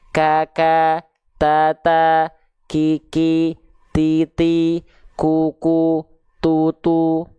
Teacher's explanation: ada percikan nafas di huruf ta dan kafnya